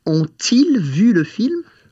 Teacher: the T of ont, which is going to be our first word, is going to have to liaise with the I of ils.